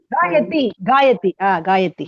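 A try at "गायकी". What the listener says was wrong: காயகி. தீ வராது. கி. காயகி.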